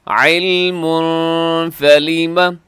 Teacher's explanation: تنوین ہے، اور تنوین کے بعد یہاں پہ فا ہے، تو یہاں بھی اخفاء ہوگا